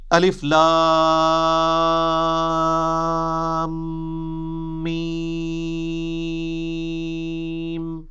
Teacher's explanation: الف لام میم، اس کو ایسے ہی پڑھنا ہوتا ہے، الف لام میم نہیں ہے یہ، وہ اردو میں ہے، عربی میں ایسے ہی پڑھنا ہوگا، 3 سے 5 الف تک کھینچنا ہوگا، لام کو بھی اور میم کو بھی، اور لام اور میم چونکہ اس کا جنکشن ہے تو میم کے اوپر تشدید بھی ہے، غنہ بھی ہو رہا ہوگا